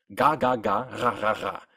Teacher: It's produced using the back of your tongue, which pulls back all the way behind where you pronounce G. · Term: German R